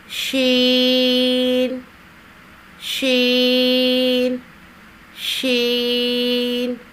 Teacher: زبان کے درمیان کو تالو کی طرف بلند کرتے ہوئے باریک اور پھیلتی ہوئی آواز میں پڑھیں گے